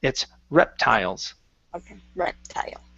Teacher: um and last one here is the pronunciation of reptiles so our stress is at the very beginning